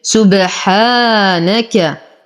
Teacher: لدينا ألف صغيرة ما قبلها مفتوح فهو من الطبيعي حركتين